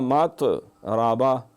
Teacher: مقرباتن مقربہ، مطرباتن مطربہ، یہاں مطربہ، یہاں قلقلہ نہیں کرنا ہے، یہ طا نہیں ہے، یہ 2 نقطے والا تا ہے، اس میں قلقلہ نہیں ہوتا